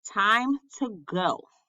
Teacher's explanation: a 3-syllable foot where the stress is on the last syllable, like the phrase time to go. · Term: Anapest